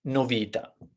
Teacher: we have three syllables and according to the the Italian patents we should put the emphasis the stress on the penultimate syllable